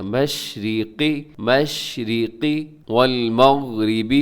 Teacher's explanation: را باریک ہے اور قاف موٹا پڑھا جائے گا، مشرقی والمغربی، تو یہاں غین کو قلقلہ ہونے سے بچے گا، را باریک ہے۔